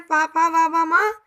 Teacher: सब होठों को छूते हुए बाहर निकलते हैं, इसलिए इसको ओष्ठ्य वर्ण कहा गया।